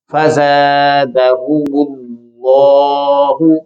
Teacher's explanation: یعنی اس میں جو حرف لام ہے اسے پیش کی وجہ سے موٹا پڑا گیا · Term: موٹی آواز